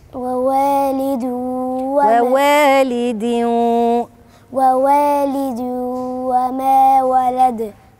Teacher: هنا عندك إدغام برضو، تنوين أهو، تنوين مكسور، هي ووالد، بس مش هنطق ن، ووالد